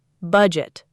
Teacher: two syllables, stress on the first